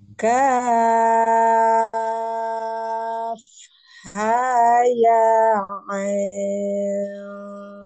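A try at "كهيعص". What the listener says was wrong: Ai dulu. I dulu, Bu. I ke I dulu. Nah, bukan jangan ain langsung. Tapi I dulu. I dulu. I panjang dulu baru dengung.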